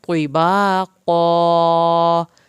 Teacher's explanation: تو پہ خصوصی خیال رکھنا ہے کہ اس کو تا نہ نکلے